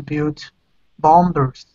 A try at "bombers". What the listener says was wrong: That B is silent, so it's bombers.